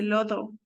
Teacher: Por ejemplo, aquí el niño quiere decir loro, pero en vez de decir loro, dice lodo, porque no puede pronunciar la R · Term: dislalia